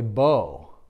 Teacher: Because when you say bow, you can hear that you can't end, you almost can't end an O without that W sound being there